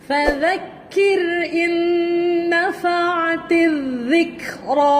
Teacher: حروف ذال. ذال hujung lidah keluar di antara gigi atas dan bawah.